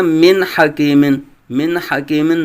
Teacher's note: نون کو اس لیے ظاہر کیا تھا یہاں حلقی میں سے ہا آیا تھا